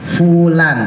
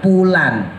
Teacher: Fa bibir bawah dikenain sama gigi atas. Fa ya, bukan bibirnya ditempelin dua-duanya. Kalau ditempelin dua-duanya ntar jadi ba sama mim.